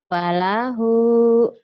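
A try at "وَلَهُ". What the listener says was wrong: Falahu. Walahu ya, bukan fa. Walahu. kedengarannya kayak fa ya.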